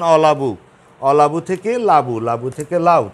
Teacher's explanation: তাহলে দেখো শুরুতে অটা লুপ্ত হয়েছে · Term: আদি স্বরলোপ